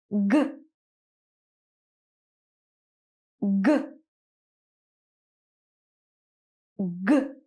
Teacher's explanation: it's the same as the k sound but it's voiced so you're not going to push out some air you're going to produce a sound you're going to make your throat vibrate okay so back of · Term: G sound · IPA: /g/